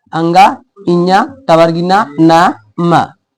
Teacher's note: सभी वर्गों के अंतिम वाला अक्षर यही हमारा होता है नासिका, यानी कि नाक से इसका उच्चारण होने वाला है